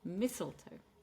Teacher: So three syllables, and we're going to stress on the first syllable.